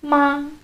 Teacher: the first tone is a high flat tone. It's important to keep in mind that when you're saying a word with the first tone, you want your voice to go higher than it normally would, but you don't want to push yourself.